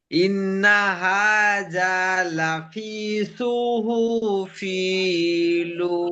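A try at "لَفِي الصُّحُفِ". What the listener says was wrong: লাফি নয়, লাফিস।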